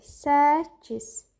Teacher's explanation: Karların tələffüzündə birinci tələffüz zamanı k olduğu kimi qalır. İkincisi qarşılığına keçir. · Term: qoşa k